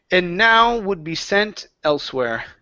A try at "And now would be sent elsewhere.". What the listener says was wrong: One more time. Open the mouth a little bit more. And now would be sent elsewhere.